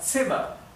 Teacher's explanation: La Z en alemán siempre se pronuncia ts.